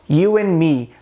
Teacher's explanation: Como se a gente removesse, a gente apagasse a letra D que consta na palavra and. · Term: reduction